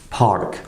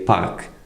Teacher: So when you say English, park, a lot of air comes out. But in Russian you say park, so it should be a lot less air.